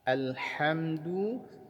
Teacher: Alhamdu, perhatikan di huruf lamnya, lam sukun tidak boleh dipantulkan.